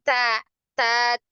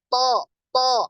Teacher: kalau huruf dal dan Ta ini pangkal lidahnya tidak naik sedangkan huruf tho ini pangkal lidah naik Kenapa karena huruf tho ini termasuk huruf yang tebal ya huruf